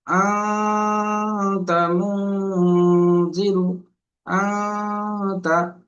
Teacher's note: এই যে নুনের আওয়াজটা নাকে তুলে একালি পরিমাণ যে ওয়েট করা হচ্ছে, ধরে রাখা হচ্ছে, এটাই হলো গুণনা।